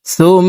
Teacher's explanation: পেশওয়ালা সাটি তাসদিদওয়ালা মিমের সাথে 3 সেকেন্ড পরিমাণ গুন্নাহ করে পড়ব। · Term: ওয়াজিব গুন্নাহ